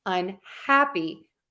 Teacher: If I add un, the prefix, unhappy, I'm still stressing the hap.